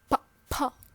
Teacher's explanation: the air is coming from the lungs inside the mouth and then we um stopped it by our lips from going out of the mouth · we used both lips to pronounce it and posive means that we have stop the air flaw in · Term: plosive sound, plosive sound or stop sound